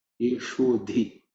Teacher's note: Ishu, again, sha, which is cerebral sha. Dhi is fourth letter in the third varga, so it has to be aspirated.